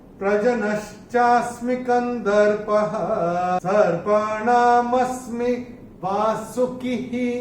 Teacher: चरण की समाप्ति पे जो विसर्ग दिखाई दे रहा है वो विसर्ग का उच्चारण केवल और केवल ह ही होगा, क्योंकि चरण की समाप्ति पे आ रहा है।